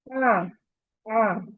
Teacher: आइन को सफली पढ़ना है, बिल्कुल भी झटका नहीं करना, जैक के साथ बिल्कुल नहीं करना।